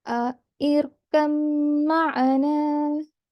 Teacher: And when joining, it would be joined as irkam ma'ana. So there will be only the meme mushaddad sound. Ba sakin would be completely ignored.